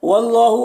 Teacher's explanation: अल्लाह के लाम को पुर पढ़ेंगे